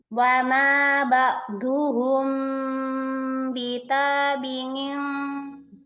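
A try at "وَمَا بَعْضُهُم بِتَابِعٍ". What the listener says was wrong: Ngomong-ngomong, ainnya di sini harus lebih tawasud. Sambung. Ba'du.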